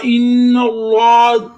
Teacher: इन्ना, अलिफ वाले लाम से पहले जबर तो अलिफ वाला लाम मोटा होगा। इन्नल्लाह, जुबान को तालु के साथ लगाएं तो अलिफ वाला लाम मोटा होगा